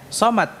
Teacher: Dia memiliki sifat isti'la dan Dia memiliki sifat apa di mana pengucapan ini tebal ya besar namun makhroj sama ya jangan dibedakan jangan dibedakan antara keduanya karena